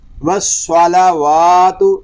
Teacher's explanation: صاد کو پر پڑھیں گے، لام واو اور تا جو ہے اس کو ہم باریک پڑھیں گے